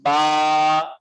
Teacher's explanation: تو یہاں دیکھیے الف سے پہلے زبر ہے اس لیے الف مد ہے، با الف زبر با۔ اب اس کو جلدی نہیں پڑھیں گے بلکہ ایک الف کے برابر کھینچیں گے